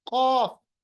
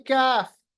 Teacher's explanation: कौफ पढ़ते वक्त कौवा को उल्टा ऊपर ले आइए, मोटा पढ़ेंगे